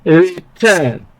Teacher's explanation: For example, in the word return, the prefix is re, and so it is not stressed